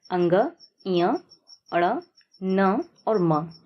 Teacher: आप जब इन सबको उच्चारित करेंगे तो आप समझ पाएंगे कि जो हवा है वह मुख के साथ-साथ नाक से भी बाहर निकल रही है और नाक में आपको कंपन भी महसूस होगा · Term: नाशिक्य व्यंजन